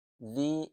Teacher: জি এক আলিফ টান হবে, কেননা ইয়া সাকিন এর পূর্বের হরফের নিচে জের আসছে, তাই এক আলিফ টান হবে।